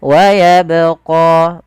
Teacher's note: dengan warna biru ini menandakan dia bacaan qqalah yang di mana huruf ba Ini harus kita pantulkan